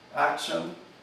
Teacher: tenemos que es la sibilante posalveolar sorda, la que ahí se pronuncia